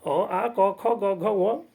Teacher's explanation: ये सारे जो है कंठ से ही निकलता है, इसलिए इसको कंठ्य कहते हैं